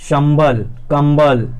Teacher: कंबल, संबल में क्या है, सा और बा के मध्य में मा ध्वनि संयुक्त हुई है। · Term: संपृक्त ध्वनियाँ